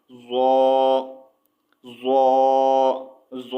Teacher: ज़ौ की आवाज़ जो है नरम और मोटी होती है, ठीक है। ज़ौ ज़ौ जो है हुरूफ मुस्तालिया में से है, तो इसकी आवाज़ जो है मोटी होगी, ठीक है।